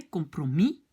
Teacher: Donc on va dire en néerlandais compromis tje. Parce que comme le S n'est pas prononcé, c'est comme si se termine par une voyelle, un compromitje.